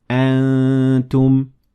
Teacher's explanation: my mouth is taking the shape of ta while I'm letting air through my nasal cavity to make it sound like this. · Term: ikhfa